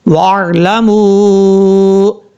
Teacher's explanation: سے۔ اب اس کے بعد ہے وَاعْلَمُوا، واو عین زبر واو، واو کو جب عین سے ملائیں گے تو بیچ میں الف کو چھوڑ دیں گے